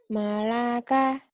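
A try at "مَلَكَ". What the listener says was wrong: Panjang kaknya ujungnya panjang. Malaka.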